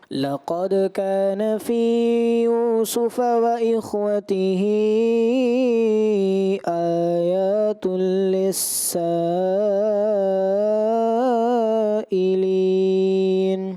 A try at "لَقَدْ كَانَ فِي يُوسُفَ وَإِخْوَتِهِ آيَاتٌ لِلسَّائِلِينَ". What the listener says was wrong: آپ کی وہی غلطیاں کہ فی آپ نے زیادہ کیا، وَإِخْوَتِهِ خواہ کو آپ نے ہلا دیا.